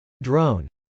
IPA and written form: drˈoʊn (drone)